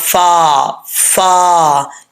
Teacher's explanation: फा को पढ़ते वक्त होठ कभी भी गोल नहीं होते · ऊपर वाले दांतों का जो निचला किनारा है, ये किनारा नीचे वाले होंठ का जो तरी वाला हिस्सा है उसके साथ ये मतलब मुलाकात करेंगे